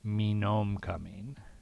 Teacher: The key is the H would be dropped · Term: H-dropping